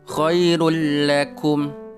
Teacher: suara tanwin tetap dimasukkan kedalam suara lam tapi Garis besarnya tidak ada dengung di situ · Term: idgham bilagunnah